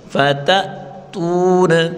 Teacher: حمزہ ساکن کو جھٹکے کے ساتھ پڑھیں گے فتأتون. تا واو پیش تو وا مدہ ایک الف کی مقدار کھینچ کر پڑھیں گے فتأتون.